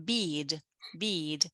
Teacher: the vowel sound is longer and the consonant is shorter